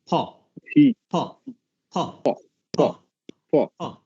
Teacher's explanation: দুই ঠোঁট স্পর্শ করে ঠোঁটটাকে একটু আটকায় দেয়া